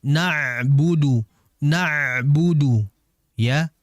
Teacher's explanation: Ainnya tadi saya dengar masyaallah sudah mengalir cuman dimasukkan lagi ke tengah tenggorokan ya.